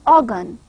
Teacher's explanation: We try to quickly jump from ga to na sound, almost mixing the vowel as schwa sound with ga sound. So this is progressive assimilation.